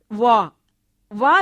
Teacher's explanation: वह ध्वनि के उच्चारण में दोनों होठ पास तो आ जाते हैं पर स्पर्श नहीं करते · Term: अर्धस्वर